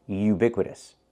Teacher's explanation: Not oo, but u. We need the y sound like yellow and yesterday.